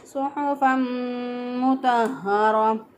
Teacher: तो जो है सुहफ़म में तनवीन के बाद जो है हुरूफ़ मरून में से मीम आ गया, तो यहाँ पे इदगाम माल गुन्ना होगा, गुन्ना भी होगा, इदगाम भी होगा · हा को हमने अक्सर हलक से अदा किया, यानी गले का वो हिस्सा जो सीने की तरफ होता है वहाँ से हा अदा करेंगे